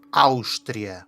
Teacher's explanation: Também é possível o som SH. Isto acontece antes da consoante surda.